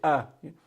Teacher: Hamza makes the a sound at the bottom of the throat